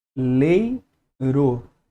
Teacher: Esse e aqui, ó, é mais fortemente pronunciado do que o I. Então é a vogal e o i que é fracamente pronunciado em relação ao e. Então eu vou chamar de semivogal. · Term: ditongo decrescente